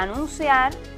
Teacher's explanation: Anunciar, en este caso, es una palabra aguda. Su fuerza de pronunciación recae en la última sílaba.